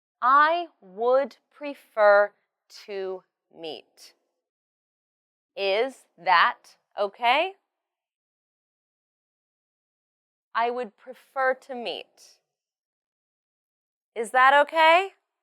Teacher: Make sure that you say prefer, meet, and the new time clearly. And you should raise your voice at the end of, is that okay?